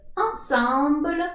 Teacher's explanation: your tongue is going at the back of your throat the sound is coming from the nose